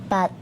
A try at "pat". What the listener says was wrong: Oh, pat. Ang layo talaga ng fat sa pat. F. Isa din yun sa laging nagkakamali ang Pinoy. Ang P natin, ginagawa nating F lagi. Yung pink, nagiging fank. Fat.